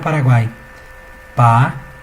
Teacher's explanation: uma vogal aqui e depois uma semivogal e uma outra semivogal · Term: tritongo